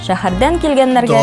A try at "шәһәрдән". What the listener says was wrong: Шәһәрдән түгел, а шәһәрдән. Х. Большая разница. Ты говоришь твердое Х, а надо говорить Х на выдохе.